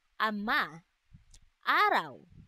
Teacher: Ang letrang A na nasa ayos ng dila na mababa at sa bahagi ng dila na sentral, ito ay binibigkas na ama araw.